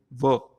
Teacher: ये दंत और ओष्ठ को मिलाकर हम बोलते हैं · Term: दांतोष्ठ